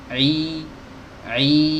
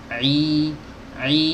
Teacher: Nah, ketika kita membaca kasroh, ingat tadi ya, ada 2 aktivitas yang harus dilakukan saat kita membaca kasroh. Pertama, menurunkan rahang bawah, bibir, i, yang kedua lidah bagian tengah agak naik sedikit, i, sehingga kasrohnya sempurna.